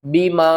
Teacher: وآمنوا، الف کے اوپر کھڑا زبر ہے، 1 الف کے برابر اس کو اوپر کی طرف کھینچیں گے، آ، حمزہ کھڑا زبر آ، نون واو پیش نو، وآمنوا بیما، چھوٹی مد ہے، 3 الف کے برابر کھینچے